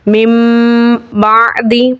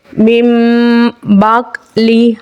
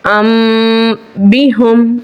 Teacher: मीम से बदलकर हम गुना करके पढ़ेंगे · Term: इकलाब